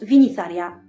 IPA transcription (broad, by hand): viniθaria